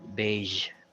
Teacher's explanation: the last sound is a zh it's not a j sound but a zh sound